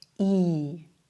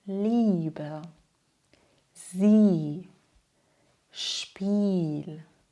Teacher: Beim IE hören wir einen langen, klaren Vokal. Das bedeutet, IE spricht man wie ein langes I.